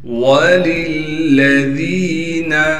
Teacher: وَأَعْتَدْنَا لَهُمْ عَذَابَ السَّعِيرِ وَلِلَّذِينَ دو لام ہیں، دونوں لاموں کو صاف کر کے نکالنا ہے۔ پہلے لام کو دوسرے لام سے ملائیں گے اس لیے کہ لام پر تشدید ہے اور تشدید ہونے کی وجہ سے تھوڑا ٹھہراؤ کریں گے۔